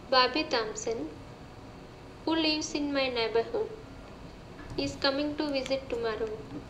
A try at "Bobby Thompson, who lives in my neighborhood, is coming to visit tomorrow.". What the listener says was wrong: Now that's where you're having trouble again with thought groups. The thought group that precedes a final thought group, the tone needs to rise a little bit. So you'll say, Bobby Thompson, who is in my neighborhood, is coming to visit tomorrow. Then you drop your tone a little bit.